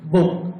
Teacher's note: বিয়ের উচ্চারণ দুই ঠোঁট একত্রিত হয়ে হবে বুক